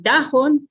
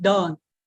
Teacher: yung historic na diphthong o dalawang vowel na magkasunod, nagiging isang vowel na lang. Kaya yung dahon ay nagiging don. · syempre yung glottal stop nawala, yung historic H nawala